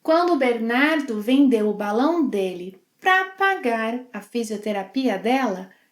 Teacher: She reduces 'para' to 'pra'.